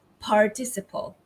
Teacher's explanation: They say the R clearly, so it'd be participle.